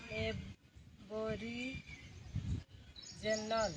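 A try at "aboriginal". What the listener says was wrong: जनरल ना जिनल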